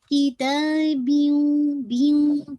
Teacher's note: من کتاب, من کتاب, ناٹ بیوں, پہلے سے بیوں نہیں, بیوں بی کی کسرہ کو واضح کر کے پھر آپ نے غنہ کو انشاءاللہ پڑھنا ہے